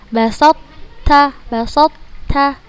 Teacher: Tetap mengeluarkan sifat ta, yaitu hamas.